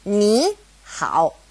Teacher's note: if it's a third tone and a third tone next to each other, ni, hao, it changes to a second tone and a third tone